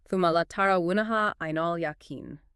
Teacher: We hear the guna again in thuma, double meme, and in latarawuna, double noon.